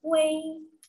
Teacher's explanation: untuk UI kita tidak membaca UI, melainkan kita membacanya wei. Seakan ada e di tengahnya. Wei. Ya, jadi ketika kita menjumpai vokal UI, kita akan membacanya wei, wei.